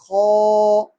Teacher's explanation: ہونٹ اس میں گول نہ ہو، تھوڑی کھردری آواز اور موٹی آواز